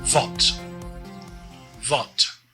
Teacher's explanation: The W here makes a V sound.